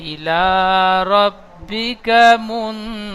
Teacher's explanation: إلى ربك منتهاها মুন তা বলে একটু টান হয়ে যাচ্ছে, তাটি টান হবে না। মুন গুন্না হবে, নুন সাকিনের পরে তা এসেছে, তো নুন সাকিনের আওয়াজটি গুন্না হবে।